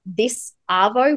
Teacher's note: we link the S to Arvo, so you'll hear that